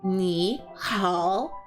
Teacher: all third tones, so the down up